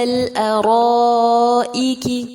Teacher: پھر آگے جو لام ہے لام قمریہ ہے اور مد متصل ہے، 4 یا 5 حرکات جتنا لمبا کیا جائے گا